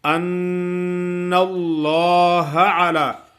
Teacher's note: ان نون مشدد ہے, آگے لام جو ہے نا وہ موٹا پڑا جائے گا. ان اللہ ایسا پڑھنا ہے کہ نون پہ تھوڑا سا ٹھہرنا ہے, غنہ بھی ادا ہوگا اور شد بھی ادا ہوگی.